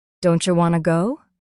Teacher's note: The phrase don't you becomes don'tcha.